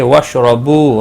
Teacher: را زبر کی وجہ سے پر پڑھا جائے گا، بو واو مدہ ہے، ایک الف کے برابر کھینچ کر پڑھیں گے.